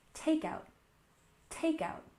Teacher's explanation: we stressed the first syllable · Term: stress the first syllable